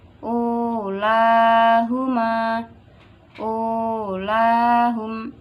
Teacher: Waw yang didahului dhammah tetap dibaca panjang.